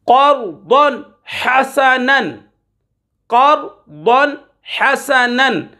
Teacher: دو زبر کی تنوین کے بعد حا حروف حلقی میں سے آ رہا ہے، تو یہاں پر غنہ نہیں کریں گے، ظاہر کر کے پڑھیں گے۔